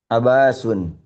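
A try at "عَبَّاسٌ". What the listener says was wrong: Abbasun ditekan. Ada tasydid di sini.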